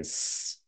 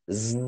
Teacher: If you put your hand to your throat right here and try to pronouncing z and s, then the s, the vocal cords don't vibrate, but with the z they do vibrate, and that's how you determine whether a consonant is voiced or voiceless.